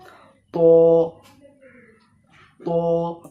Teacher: তকে এক আলিফ টান দিয়ে অর্থাৎ এক সেকেন্ডের মত বলতে হবে